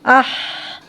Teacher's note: آواز جاری ہے، یہاں پہ دیکھیں نرمی بھی ہے، تو معلوم ہوا اس کے اندر صفت رخوت ہے